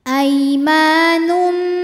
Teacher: dibacanya lembut atau lunak Aima Ma hukumnya Mad Thobi'i dahahiri sebab ada Alif didahului harakat fathah maka mimnya panjang dua harakat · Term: mad tabi'i dhahiri